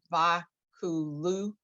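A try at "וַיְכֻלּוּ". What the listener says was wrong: All right, so you have to hear the y sound. Vaya, yeah. There's a shva that you.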